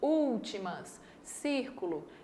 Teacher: A antepenúltima sílaba é a mais forte, últimas, círculo.